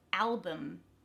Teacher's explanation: That al in the beginning is the stressed syllable, so it becomes bum at the end.